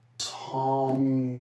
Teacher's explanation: He's non-rhotic, so he never pronounces a r sound in words like sort and harm